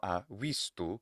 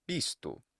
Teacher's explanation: That is, if a letter B or a letter V starts an utterance, starts a phrase, then it will have that B sound. But when it's between vowels, intervocalically, either internal to a word or between vowels within the phrase, that letter B or letter V will sound exactly like English W